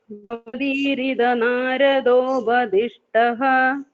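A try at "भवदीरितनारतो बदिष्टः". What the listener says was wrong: That visarga should come.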